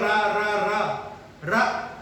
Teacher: हमारी जो जीभ होती है, हमने बोला रा रा रा रा, तो जब रा बोला तो हमारी जीभ कपकपा रही है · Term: लुंठित